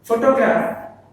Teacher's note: Photograph, the stress falls on the first syllable, that is pho